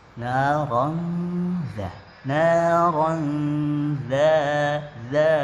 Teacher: Jadi ketika kita bertemu dengan za, bagaimana posisi lidah kita? Posisi lidah kita sudah berada di bawah gigi seri yang atas, naron, karena kita ingin mengucapkan za. Awal daripada permulaan za disentuhkan ke ujung lidah kita, disentuhkan di ujung gigi seri atas. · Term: ikhfa